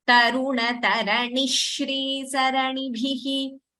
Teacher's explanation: There is a Dvitvam after Ni. So that Sh doubles.